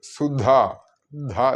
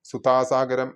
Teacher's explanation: ശ്രദ്ധിക്കേണ്ടത് സുധാ ധ ശ്രദ്ധിക്കണം ഇവിടെ മഹാപ്രാണനാണ് അല്ലെങ്കിൽ ഘോഷ ശബ്ദമാണ് ഉപയോഗിച്ചിട്ടുള്ളത്